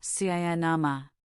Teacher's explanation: In cinema, the last syllable ma is a schwa, cinema. In to, it becomes ta.